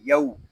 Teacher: یہاں واو لین ہو رہا ہے، اس کو ہم کھینچ کر نہیں پڑھیں گے، اس کو یو یا یو ایسے نہیں پڑھیں گے، اس کو پڑھیں گے یو.